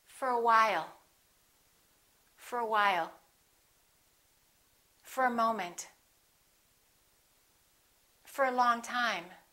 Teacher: let's look at what happens to four we reduce the o and it becomes uh fur